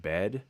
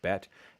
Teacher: Charlie Farrington wrote a whole dissertation on this, and he talks about it as incomplete neutralization because you can still tell the difference between the word bet and bed by the vowel length beforehand. Before the D, it's a longer vowel. Before the T, it's a shorter vowel.